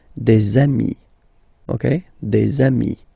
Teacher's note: Okay, and so you've got des ami, okay, and if you make the liaison, so the link between the two, you will get des amis